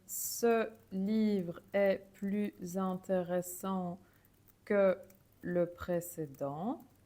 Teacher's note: And here I put the Z because the pronunciation was changed to Z because plus was in front of interesting, which start with a vowel. And that's a general rule, so it's not specific to plus. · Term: liaison